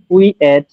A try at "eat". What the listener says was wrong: না এট না, ইট। এট না, এট না, ইট।